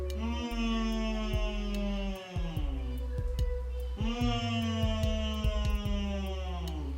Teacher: And next we have the letter M. M says So your lips are closed and air is coming out through the nostrils. It's a nasal sound.